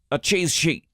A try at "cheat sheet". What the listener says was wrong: No, not cheese. Cheat.